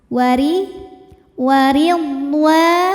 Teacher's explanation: huruf ro dibunyikan secara tarqik karena rnya ini berbaris kasrah maka dibacanya tipis